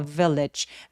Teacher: A hungry traveler walked into a village. Village 할 때 V 앞에서 바람소리 살짝 느껴지게 해 주시는 거 포인트고요